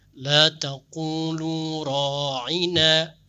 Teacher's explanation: i-nya tidak panjang, ra'ina harusnya pendek. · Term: panjang pendek